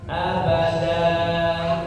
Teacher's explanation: Abadan, kalau berhenti maka dibaca jadi abadan. Tanwinnya hilang, digantikan dengan mad ya. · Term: mad iwad